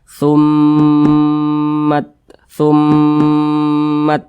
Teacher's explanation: gunah musyaddadah ini didengungkan suaranya itu dipanjangkan dua harakat atau kira-kira dua ketukan nah tumat tumat nah dipanjangkan seperti itu didengungkan didengungkan itu suaranya · berjumpa dengan huruf mim yang bertasydid itu pasti dibaca dengung